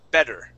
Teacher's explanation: He did not pronounce those T's. He pronounced that double T like a D sound.